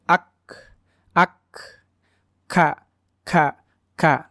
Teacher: Kaf ini mempunyai sifat hams. Jadi dia ada desisan napas juga keluar. Walaupun tidak sebanyak huruf sin yang tadi ya.